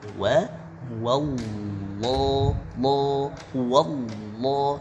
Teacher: lafzul jalalah ini kita harus tebalkan